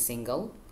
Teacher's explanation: Single has two syllables, and the stress syllable is in sing.